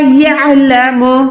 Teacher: عین حلق کے درمیان سے